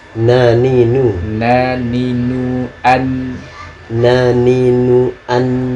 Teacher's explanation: huruf nun itu harus ketemu gusi atas, jadi agak sedikit lebih maju. Gusi tahu kan ada bagian lancip, daging lancip, nah, itu kenain ke situ.